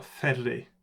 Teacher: Because of the way the R is pronounced, it's not really a liquid in Japanese so much, it's a tap. It's a so it's almost more like it's closer to a stop than it is to a glide, like you have an r or l as you do in other languages.